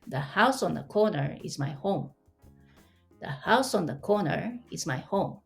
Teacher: house corner home are strongly sounded in English · You can hardly hear The on the is my in English, right? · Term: accents and rhythm